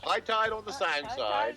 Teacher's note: that vowel of tide is back, so it sounds more like toy